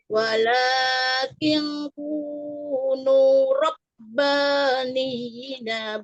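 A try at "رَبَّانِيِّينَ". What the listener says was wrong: Rabbaniyyi. Yi-nya 2 harakat.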